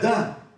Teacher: avec A, voyelle antérieure ouverte